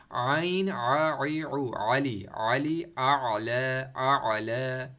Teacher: Throat के जो दरमियानी हिस्सा है वहाँ से जो है हम पढ़ने की कोशिश करते हैं आइन के, क्योंकि आइन की जगह ही वही है और उर्दू में हमारे लिए वो जगह बनी भी नहीं है वहाँ पर।